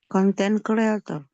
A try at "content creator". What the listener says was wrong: It should be pronounced content creator. Content creator. Bukan con, tapi can. It's not con, but it should be pronounced can. Content creator.